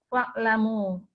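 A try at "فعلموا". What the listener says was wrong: Fa'alimu nggak ada alifnya nih. Fa'alimu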